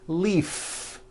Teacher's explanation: if you stop the voicing at the end of the vowel e then you would be saying leaf with an unvoiced f